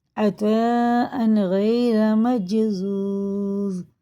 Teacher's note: تنوین کے بعد غین ہے حرف حلقے میں سے، تو اظہار کا قاعدہ ہوگا، نہ غنہ نہ اخفا